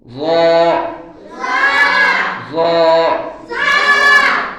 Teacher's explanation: ظا ظا ظا তাহলে য বলতে আমরা কি করব, উপরের দুই দাঁতের আগার সাথে জিহ্বার আগাটা আমরা মিলাবো